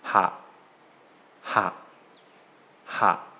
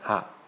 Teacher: it's going to make a short low tone.